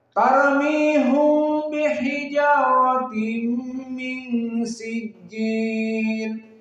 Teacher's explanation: Dan poinnya dari segi qiraah tarmihum, bukan tarmihim. Maka qiraah Ya'qub tidak membaca him tetapi dhammah ha.